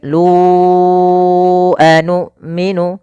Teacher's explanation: Nah, di sini ada mad jaiz munfasil kembali, yaitu ditandai dengan ada mad tabi'i bertemu dengan hamzah setelahnya, atau apabila ada huruf hamzah yang datang setelah huruf mad dan hamzah tersebut pada lain kata. Panjang lu adalah kita panjangkan 4 harokat atau 5 harokat.